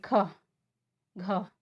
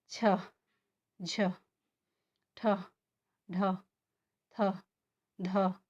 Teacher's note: जैसे देखिए ख, घ, तो इसको जब हम बोल रहे हैं तो हमारे मुख से जो है सांस अधिक मात्रा में निकल रही है, हवा अधिक मात्रा में निकल रही है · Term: महाप्राण